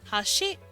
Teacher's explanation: they up the pitch more if it means Bridge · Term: pitch accenting